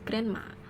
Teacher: The reason is the d sound disappear because it is between n and m two nasal consonant